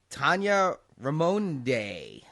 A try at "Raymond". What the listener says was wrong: How about Raymond? Just say Raymond. Maybe the E is silent.